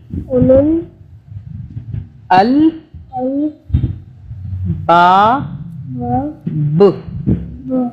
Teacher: با یہاں پہ ہم با پہ رک رہے ہیں نا، با پہ ہم قلقلہ کریں گے، یعنی کہ جھٹکے سے کریں گے